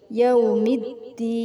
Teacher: karena ada huruf lam bertemu dengan huruf Dal cara membacanya dimasukkan ke huruf Dal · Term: Idham Syamsiah